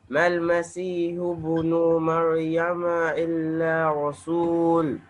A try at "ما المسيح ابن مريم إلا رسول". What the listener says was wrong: You have dragged little bit nu. Mal Masihu ibn nu, one count.